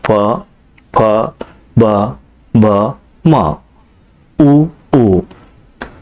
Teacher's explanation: ಅಕ್ಷರಗಳು ತುಟಿಗಳ ಸಹಾಯದಿಂದ ಹುಟ್ಟುತ್ತವೆ